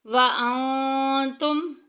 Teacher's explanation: نون ساکن کے بعد تا آ گئی ہے، تا چونکہ حروف اخفا کی فیملی میں سے ہے، یہاں پہ ہائٹ کریں گے، چھپا کے پڑھیں گے